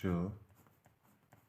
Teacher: पेट कटा श का जो उच्चारण स्थान है वो है मूर्धा